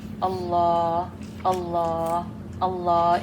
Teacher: The heh comes from the lowest part of the throat.